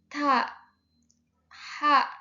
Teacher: Kalau ta ha nah itu tidak ada getaran berarti itu masuknya masuknya ke mahmusah. Nomor empat ada pengertian vokal atau harakat ya.